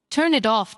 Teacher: Turn it off doesn't sound like three separate, clean words. It flows together, almost like turn it off spoken as one smooth unit. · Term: linking